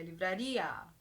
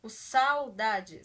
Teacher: na livraria a gente tem um ditongo crescente enquanto em saudade a gente tem um ditongo decrescente